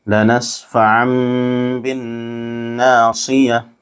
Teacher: لنسفعا بالناصیہ، یہاں نون ساکن کے بعد با اس لیے یہاں بھی اقلاب ہوگا، نون کی آواز کو نون کو میم سے بدل کر پڑھیں گے، میم غنہ اور اخفا کے ساتھ پڑھیں گے